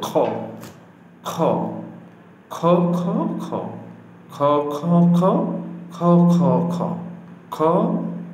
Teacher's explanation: খটা হলকের শেষ ভাগ হইতে উচ্চারিত হয়